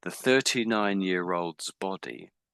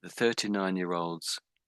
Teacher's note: it's a very, very subtle, very quiet-sounding S, but I am saying it.